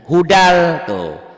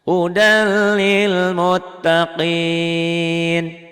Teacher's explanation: N-nya tanwinnya ketemu l tuh. Karena n-nya ketemu l, karena tanwinnya ketemu lam, maka bunyi n-nya, bunyi tanwinnya hilang. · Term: idgham bila gunnah